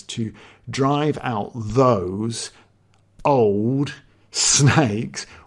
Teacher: these are single syllable words but they really sound longer than a single syllable normally would